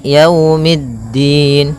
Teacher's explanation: Pada lafal yau di sini ada bacaan lin yaitu berupa fathah bertemu dengan huruf wau. Maka yaumiddin kemudian mid langsung ke da.